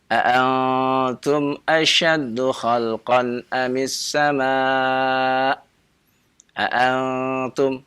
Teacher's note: Ya, karena itu ikhfa. Ya, dia tempelkan nun sukunnya kepada huruf ta-nya. Ya, jadilah dia ikhfa.